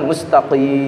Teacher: qaf itu termasuk lisan pangkal, ya, atau pangkal lisan yang dekat ke tenggorokan sehingga kita mengucapkan mustaqim.